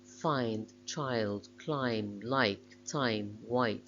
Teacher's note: begins with an open vowel between front and back near the ah in the words cut and bun and it glides in the direction of the closer vowel which makes it a closing diphthong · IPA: aɪ